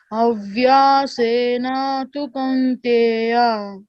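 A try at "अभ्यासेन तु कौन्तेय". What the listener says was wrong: See, it is Abhya is Mahaprana, BHYA or in Sanskritam. Abhya, whatever is in the red letter is Mahaprana, you have to stress, okay? Abhyasena tu Kaunteya.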